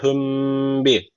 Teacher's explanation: burada dudak ihfası dediğimiz bir tecvit var. Bir elif miktar tutuyoruz.